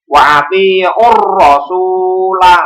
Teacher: Jadi al-ta'rifnya ini seolah-olah hilang, langsung masuk ke huruf syamsiyahnya.